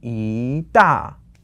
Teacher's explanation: So 大 is fourth tone, so you have to change the 一 to a second tone.